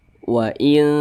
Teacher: dia dekat maka kadar samarnya itu dia lebih kuat Nah jadi kadar samarnya itu dia lebih tinggi dibanding dengan kadar dengungnya jadi lebih condong berbunyi n tapi disamarkan · jadi lebih condong berbunyi n tapi disamarkan Wain jangan dibaca waing ya jangan seperti itu di baca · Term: ikhfa Hakiki aqrob